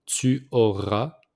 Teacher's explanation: So we don't pronounce the S at the end.